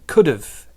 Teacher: It joins and we get a dov sound.